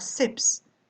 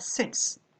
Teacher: le S de la troisième personne va se prononcer S, après les sons F, K, P, T.